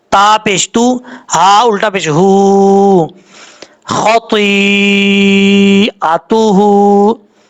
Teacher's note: हमजा के बाद जो ता है ये बरीक पढ़ेंगे, जो दो नुक्तों वाला ता है।